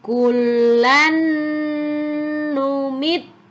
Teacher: tanwin bertemu dengan huruf nun tanwinnya lebur masuk ke dalam Nun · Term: idgham